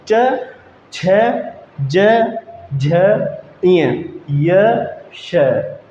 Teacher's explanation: जो हमारी जीभ है ना दोस्तों पीछे हट करके ऊपर तालु से टकरा करके तब आती है। ठीक है, इसलिए इनको तालव्य व्यंजन भी बोलते हैं।